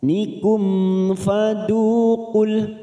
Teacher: ada mim sukun bertemu Fa namanya Idhar syafawi mim sukun kita baca jelas